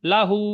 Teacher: উল্টা পেশ ওয়াও মাদ্দার সমতুল্য বলতে হবে